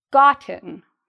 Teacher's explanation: There's two parts to the pronunciation of this word, and the first part is louder, the second part is quieter. Gotten. She has gotten it.